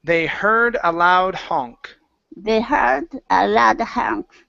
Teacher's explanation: now with heard instead of had, her, get that R vowel in there